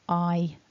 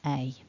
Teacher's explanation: on the left eye the mouth front is relaxed and the tongue is a bit more relaxed whereas on the right with a the tongue's a bit higher and the mouth the lips are sort of slightly more tense